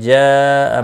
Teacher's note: جاء مد متصل ہے، 4 الف کے برابر کھینچ کر پڑھیں گے۔